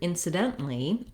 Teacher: the rhythm is different and the vowels are different that's because we're stressing the dent syllable in incidentally